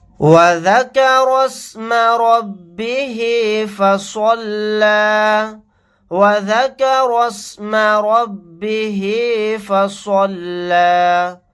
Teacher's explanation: را کو سین کے ساتھ ملا دیں گے، الف نہیں پڑھا جائے گا.